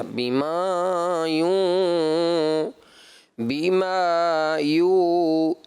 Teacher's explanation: جب آپ تلاوت فرماتے ہیں بیٹا تو ناک میں آواز جاتی ہے آپ کی